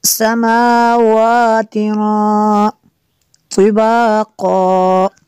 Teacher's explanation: ما لکم لا ترجون للہ وقارا، وقد دال پہ قلقلہ ہوگا، خلقکم اطوارا، وقد خلقکم اطوارا، الم تروا کیف خلق اللہ، لفظ اللہ کو پر کرنا ہے، سبع سماوات، دونوں میم کے اوپر اور واو کے اوپر کھڑا زبر ہے، دونوں کو برابر کھینچنا ہے